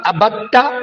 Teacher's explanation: دال ساکن تا مشدد میں جا رہی ہے اور دونوں ہم مخرج ہیں اور کلمے ایک ہی ہے۔ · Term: ادغام متجانسین